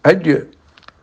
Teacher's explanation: Setelah habis qalqalahnya, sudah suara tidak berlanjut, mandek ya. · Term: syiddah